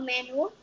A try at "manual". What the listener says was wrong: Do you have not Manuel? Manuel is not a person's name. Manuel is.